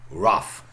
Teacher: the consonant is not completely elided it's turned into a labiodental so becomes a roof and then it must have been shortened